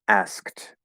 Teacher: there are two stop sounds right next to each other